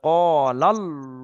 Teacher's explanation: এই ল বলে মুখ গোল করার নাম হলো পুর।